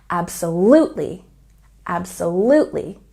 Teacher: Absolutely has a stress on the third syllable.